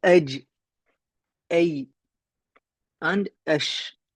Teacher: They're pronounced by raising the wastul lisan, the middle of the tongue, up to the hard palate, directly above it.